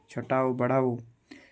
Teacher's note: ओष्ठ यानी ओठ से बोले इसलिए इसे ओष्ठ वर्ण कहते हैं